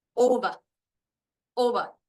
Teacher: over we can tell by looking at the guide the O the long o is the one that has the stress